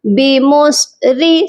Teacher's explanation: با زیر بی، میم صاد پیش مس، بی مس، را زیر ری، بی مس ری، صاد کو موٹا کریں گے اور را کو باریک پڑھا جائے گا کیونکہ را کے نیچے زیر ہے